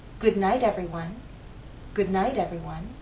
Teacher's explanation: flap te as in little well consider the phrase good night if it's followed by an unstressed vow sound that final T in night changes to a flap T